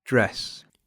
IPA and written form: dres (dress)